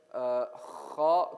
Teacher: Kha comes from the throat towards right above the middle. Ha, kha. Kha comes right above the makhraj of the letter ha.